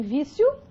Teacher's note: semivogal I, seguido da vogal O. Então, você tem um ditongo crescente